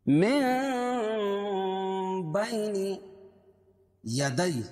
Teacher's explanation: یا ساکن سے پہلے زبر ہو تو یا لین، اس کو نرم آواز کے ساتھ جلدی ادا کریں گے